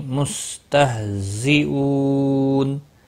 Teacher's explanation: مستہزئون او واو مدہ ہے، ایک الف کے برابر کھینچ کر پڑھیں گے۔ نون وقف کی صورت میں نون ساکن پڑھا جائے گا، وقف بالاسکان ہوگا، 3 سے 5 الف کے برابر کھینچ کر وقف کریں گے